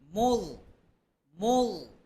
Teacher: জিহ্বার আগা সামনের উপরের দুই দাঁতের আগার সাথে লাগবে পাতলা করে উচ্চারণ করতে হবে জাল পাতলা হবে তবে জ পাতলা